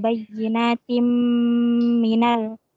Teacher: Ta berharokat kasrotain bertemu dengan huruf mim. Hukumnya idgham bigunnah.